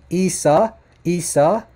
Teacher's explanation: Listen to that guttural ayn at the beginning.